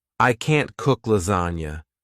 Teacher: if you want to emphasize that you can't do something, you emphasize the word can't.